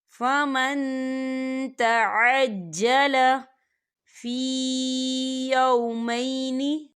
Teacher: فی ایام معدودات فمن تعجل، یہاں دیکھیں فمن، یہاں نون ساکن ہے اور نون ساکن کے بعد تا آ رہا ہے، اور تا جو ہے اکفا کا ورڈ ہے، تو ہم یہاں اکفا کریں گے، نون ساکن کی آواز کو ناک میں چھپائیں گے